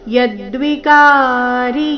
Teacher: ಕ ದೀರ್ಘ ಮತ್ತೆ ರಿ ರಸ್ವ